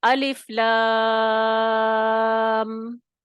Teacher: تو یہ جو ہم الف لام میم کو اتنا کھینچ کے پڑھتے ہیں نا، یہ حرفی مد لازم ہے، حرفی مخفف.